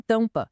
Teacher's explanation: E também temos os vocálicos, como o an em tampa. Essas duas letras juntas fazem com que o som do a saia pelo nariz